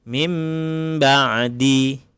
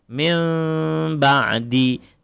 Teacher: Yang pertama ada yang membaca bibir rapat. Mim ba'di. Ada yang membaca satu lagi bibir tak rapat.